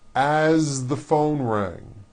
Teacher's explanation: As, you pronounce it with a voiced Z.